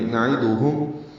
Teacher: دال اور ہا معروف طریقے سے پڑھتے ہوئے ہا کو میم سے ملائیں گے. نعیدہم او واولین ہے، ہونٹوں کو گول کریں گے، آگے کی جانب لائیں گے